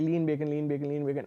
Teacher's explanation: When the N phoneme precedes the B sound, so people say lean bacon, if you say lean bacon, lean bacon, lean bacon again and again, sometimes the because of the co-articulation effects, people would perceive the N sound as the M sound.